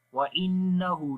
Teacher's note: نون کے اوپر شد ہے غنہ کریں گے، ہا کو لمبا کریں گے، الٹا پیش ہے